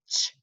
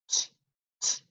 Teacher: it's a quick, fat puff of air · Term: ch sound